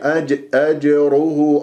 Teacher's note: الراء مفخمة لأنها مضمومة، والهاء هنا راح يكون عندي مادة صلة صغرى حركتين مع ضم الشفاه.